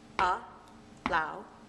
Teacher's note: the strong stress has to be on that second syllable